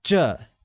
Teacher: is pronounced with a falling tone